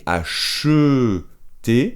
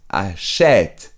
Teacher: ¿Y qué pasa con la pronunciación? Es que en lugar de acheter, se abre la E y es achète